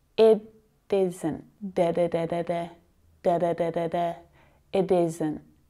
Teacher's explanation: So to make that bit sound, I'm just flicking my tongue ever so quickly up behind my teeth on the gums